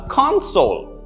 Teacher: Notice the stress on con.